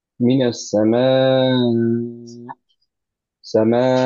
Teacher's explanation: Sharp stop করি, কিন্তু একটু ভয়েস লেভেলটা উঁচু করে দিয়ে তারপর করি। ইন দ্যাট কেস তখন হচ্ছে বোঝা যায় যে এখানে একটা হামজা ডেফিনেটলি আছে।